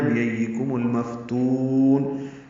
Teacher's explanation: کاف باریک ہے، میم کو المفتون کے لام سے ملا دیں گے، اظہار قمری ہوگا. فا ساکن پہ ہمس ہے، تا کو لمبا کریں گے، وقفاً مد عارض للسکون ہے.